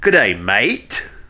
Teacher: Like now the thing about Australian is you have to, if you want to do an Australian accent, you have to end everything as though it is a question. Like, for real, you have to have a rising intonation.